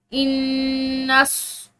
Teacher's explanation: नून में शदीद है तो यहाँ पर हमने गुन्ना करना है।